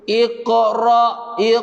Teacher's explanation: Ada bunyi kok macam tu. Tapi bunyi qalqalah lantunan dia tu tak besar sangat. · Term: qalqalah sughra